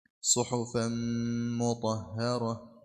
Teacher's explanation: tanwin bil fathi mudgham fil mimil madmumah bi gunna harakatain